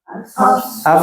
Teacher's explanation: ketika dalam kondisi sukun nafasnya mengalir dengan sempurna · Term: huruf Fa